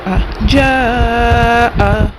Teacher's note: جا میں مد متصل مد واجب ہوگا، مد کے بعد حمزہ اسی کلمے میں ہے تو 2 سے 2.5 الف کی مقدار کھینچ کر پڑھیں گے۔ جا، حمزہ کے اوپر زبر ہے، جلد پڑھیں گے آ، جا آ۔